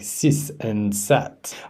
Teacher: pronounces th sounds as s like sis and sat